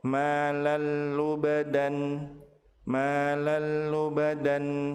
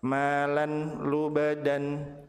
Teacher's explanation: Apabila tanwin bertemu dengan lam, maka tanwin dilebur ke huruf lam tanpa ditahan dan tanpa disertai dengan gunnah.